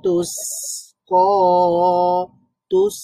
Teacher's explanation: সিনের সাউন্ডটা জারি থাকবে, রাখাওয়া